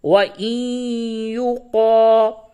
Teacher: نون ساکن کے بعد یا ہے، ادغام مع الغنہ ہوگا